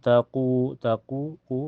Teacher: karena waw sukun sebelumnya harokat domah di ku dibaca panjang 2 harokat